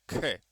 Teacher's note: ख बोलते समय ज्यादा हवा निकालनी पड़ती है। ज्यादा प्रयास करना पड़ता है। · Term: महाप्राण